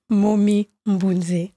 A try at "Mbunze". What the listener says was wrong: Mais tu l'as prononcé comme une Moulouba. Tu as mis le N. Mbunze. Ah, tu vois, tu as le petit N là. le petit N là, Mbunze.